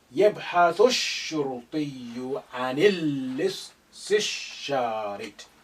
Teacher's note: You link that with the first sheen, which is carrying sukun here. Alif is silent because not at the beginning. Lam is silent because you have sun letter after the lam of al.